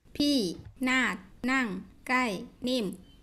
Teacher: And each of these words has a lexical falling tone, which if you say the word in isolation, you can see the clear fall. But when you put them together in a sentence, you get a slight fall at the phrase break, a big fall at the end, but otherwise just this high plateau